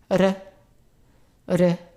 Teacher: It's closer to the Spanish R. It's a rolled R. However, it's not as strong as in Spanish. So it's R. R.